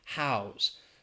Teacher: if it's used as a verb, we pronounce it with a Z